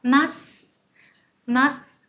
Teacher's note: Cho nên tất cả các động từ đều có đuôi chúng ta đọc là masu. Nhưng mà các bạn đừng đọc rõ chữ sư nhé, đây thành âm gió